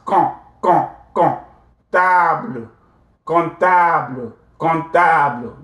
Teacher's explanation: nasalize, the P will not be pronounced